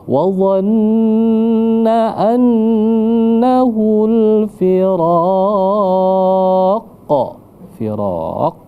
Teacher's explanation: qalqalah kubro karena dia berada di akhir. Nah, jadi harus pantulannya harus kuat ya karena dia kubro besar.